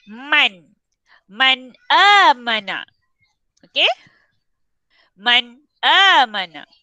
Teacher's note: Jelaskan bunyi nun mati tu. Matikan nun tu sejelas yang mungkin. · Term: izhar halki